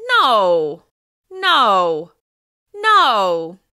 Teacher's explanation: The steep fall on this word signals annoyance as well as a little disbelief in what happened.